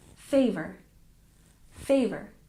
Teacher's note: let's check our pronunciation favor we stress the first syllable